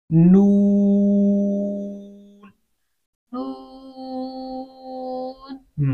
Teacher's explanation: नून के एक तो पेश है, पेश अदा होती है होंठों को गोल करके, होंठों को गोल करके अदा होती है।